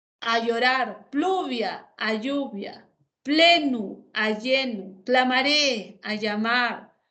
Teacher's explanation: estos grupos consonánticos pl cl FL evolucionaron a la elle por ejemplo florale a llorar pluvia a lluvia plenu a lleno